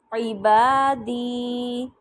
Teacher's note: با کو بھی ایکول لمبا کیا میں نے، دی کو بھی ایکول لمبا کیا. الف مدہ بھی میں نے اور یا مدہ، اس والے مرکب میں دونوں مدہ آ رہی ہیں.